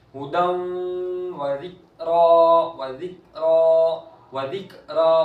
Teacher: ये काफ डंडी वाली काफ कलकला में नहीं है, तो फिर उसकी आवाज साकिन है तो लौटते हुए वापस नहीं आएगी, बिल्कुल भी नहीं।